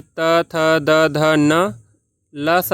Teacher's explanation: आपका दांत से उत्पन्न होने वाले ध्वनियां है